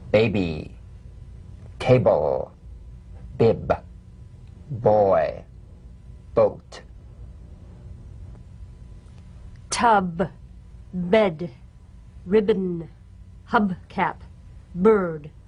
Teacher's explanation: Voiced, labial stop or plosive consonant. A drumbeat staccato consonant. Close the lips together gently and let them spring apart lightly. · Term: drum beat B